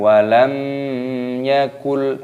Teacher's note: ini hukumnya dibaca izhar syafawi dibaca jelas tidak boleh didengungkan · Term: idhar syafawi